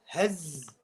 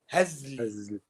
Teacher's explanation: So you're reading the zain هز. And just before you finish the z, you got the l sound.